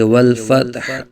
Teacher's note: حا ساکن میں بھی حا کی آواز نکلے گی، حا کی آواز کو ظاہر کریں گے۔